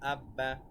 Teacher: দুইবার না লিখে বরং তাসদিদের মাধ্যমেই সহজেই দুইবার উচ্চারণ করা যায় তাসদিদওয়ালা হরফ একত্রে দুইবার পড়া যায়